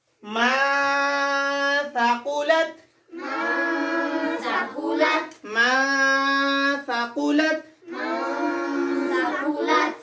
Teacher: Qaf is echo and heavy too.